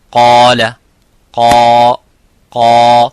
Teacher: the alif is mufakham, it is a heavy because of the qaf. So whenever the letter is heavy, you make the letter alif qaf, the letter alif of mad, heavy. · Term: alif sakin